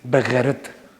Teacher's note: when we speak in Urdu or Punjabi or Farsi, we read the letter ghain from the middle of the tongue.